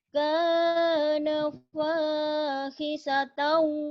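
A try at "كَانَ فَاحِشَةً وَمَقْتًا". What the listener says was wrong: Shin. Shin. kana fahishatan wa maqta kana fahishatan wa maqta.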